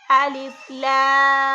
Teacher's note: الف، اس کے ساتھ لام ہے، لام کے اوپر ہے بڑی مد۔ اس بڑی مد والے حرف کو یعنی لام کو ہم 4 سے 5 الف کے برابر لمبا کریں گے